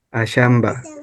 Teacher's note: Aquí la P se cambia a B, por eso en la pronunciación está ashamba.